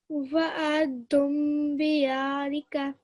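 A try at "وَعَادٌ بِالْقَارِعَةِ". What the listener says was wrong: Almost. So you're joining this bar to this lam sakin, so it's not an alif. Bil qari'ah. So remember, you're applying this time around. You're going to apply the mim maqluba. So wa'adun bil qari'ah. So this, I think you're getting confused over here. Bil qari'ah.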